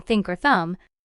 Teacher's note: for the voiceless th like in thinker thumb you put your tongue between your teeth and blow air out you don't use your voice just air there's no vibration in your throat for the voice th like